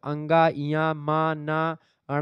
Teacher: ये जो है नाक के माध्यम से, थोड़ा नाक और मुंह के माध्यम से बोले जाते हैं, इसलिए इनको अनुनासिक कहते हैं।